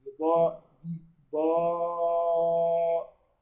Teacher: شوف الضاد بقى اعلى درجات التفخيم بقى، ضاد وبعدها الف مفتوح وبعدها الف، القصه ضغط كده ضاء دي ضاء.